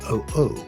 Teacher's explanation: is a glottal stop like the sound between the O's in OO and is considered a consonant.